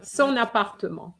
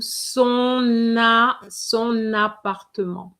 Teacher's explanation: So you're going to link the N with the A and it's going to give you son son appartement. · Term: liaison